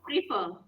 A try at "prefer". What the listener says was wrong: No, it's not prefer. It's prefer. It's not pre. It's prefer.